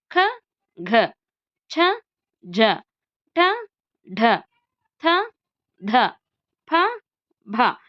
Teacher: ಹೆಚ್ಚು ಉಸಿರಿನಿಂದ ಉಚ್ಚರಿಸಲ್ಪಡುವಂತಹ ಅಕ್ಷರಗಳನ್ನು ನಾವು ಮಹಾಪ್ರಾಣಾಕ್ಷರಗಳು